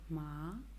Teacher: you go up the second tone goes up